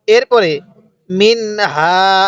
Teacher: এই নুন সাকিনটা আমরা স্পষ্ট করে পড়বো